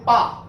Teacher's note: जिन वर्णों का उच्चारण करें दोनों ओष्ठ आपस में टकराते हैं, जैसे बोलेंगे पा तो दोनों ओष्ठ आपस में टकराते हैं, इसमें जीभ का कोई कमाल नहीं है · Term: ओष्ठ वर्णों